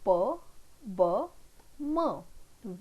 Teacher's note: both the lips come in close contact with each other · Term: bilabial sounds